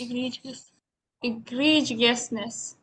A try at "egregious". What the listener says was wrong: Okay, you can avoid जीएस। So India में जीएस बोला जाता है ज्यादातर, जीएस जीएस जीएस, but actual pronunciation में जीएस नहीं होता, ठीक है? It is egregiousness, egregiousness।